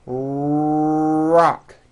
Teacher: notice how my lips are coming forward and my tongue moves back in my mouth and I push out the R sound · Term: American R sound